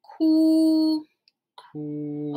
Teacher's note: Okay, this one, remember flat tone, your highest pitch